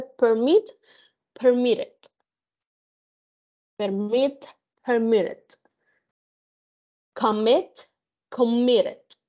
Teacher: verbos de 2 sílabas que su mayor fuerza de voz está en la segunda sílaba y termina en una consonante.